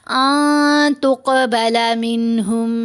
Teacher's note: تا حروف اخفا میں ہے، تو پھر آواز بن گئی آ، نون کی آواز کو پھر ہم نے ناک میں چھپانا بھی ہے، ہولڈ بھی کرنا ہے، ساتھ غنہ بھی کریں گے۔